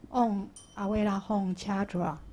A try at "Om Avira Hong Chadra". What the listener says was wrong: 哎 ， 等 一 下 ， 我 要 纠 正 一 下 ▁，Om ▁Avira ▁Hong ▁不 是 ▁Om ▁Avira ▁La ▁Hong， ▁你 是 ▁La ▁Hong ▁不 是 ▁？Om ▁Avira ▁Hong ▁Chadra。